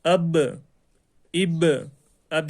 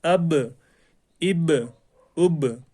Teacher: با کا جو مخرج ہے وہ ٹکر کھا کر الگ ہو جاتا ہے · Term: قلقلہ